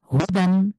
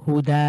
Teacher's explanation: দুই জবরের পরে যেহেতু থামছি এটাকে এক জবর ধরে এক আলিফ টেনে পড়ছি